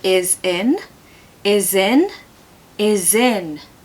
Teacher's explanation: you're going to blend them together using the smooth Zed sound